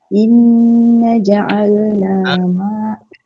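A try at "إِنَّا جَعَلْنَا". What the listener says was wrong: Inna tu panjang sikit.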